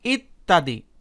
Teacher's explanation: বন্ধুরা, এখানে ভালোভাবে খেয়াল করে দেখুন, এখানে শব্দের মাঝে ব্যঞ্জনবর্ণের সাথে অর্থাৎ তয়ের সাথে জ ফলা যুক্ত হয়েছে এবং উচ্চারণের সময় এই জ ফলা যুক্ত বর্ণটির উচ্চারণ অর্থাৎ এই তয়ের উচ্চারণ দ্বিত্ব হয়েছে, মানে ডাবল হয়েছে। ত দুইবার উচ্চারিত হয়েছে। এখানে ত আছে একবার, সাথে জ ফলা আছে, আর উচ্চারণের সময় ত দুইবার উচ্চারিত হয়েছে।